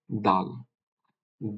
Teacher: জিহ্বাটা সম্মুখ পাটির উপরের ভাগের সম্মুখ পাটির দাঁতের গোড়াতে বাড়ি খাবে